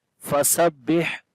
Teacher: ہا کے اوپر جو ہے وہ صفت ہمس ہوگی، ہا کے اندر سانس جاری ہوگا